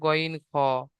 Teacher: হলকের বা কণ্ঠনালীর শেষ ভাগ হতে উচ্চারিত হয় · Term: 3 নম্বর মাখরাজ